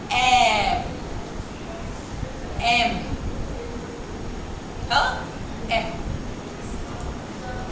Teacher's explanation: जब तुमने एम बोला ना तो पहले होंठ खुले थे और फिर साथ आए